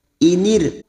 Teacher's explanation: ra sukun yang didahului kasrah kita baca tarkik atau tipis